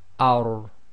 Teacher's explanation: So the first, or the three letters, is the ra, the lam, and the noon. So the ra, with a fatha on the letter before it, if it carries sukoon, goes into a heavy letter, i.e. it's tafkhim. So this will be pronounced as ar.